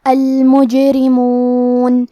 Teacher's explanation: کلمت المجرمون میں جیم پہ جزم ہے، تو یہاں بھی جیم کا حکم ہے قلقلہ، ہم یہ حرف کو ہلاتے ہوئے یہ کلمہ کو پڑھیں گے